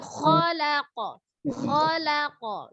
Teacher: Kalau kho baru dia tekan angkat pangkal lidahnya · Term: huruf isti'la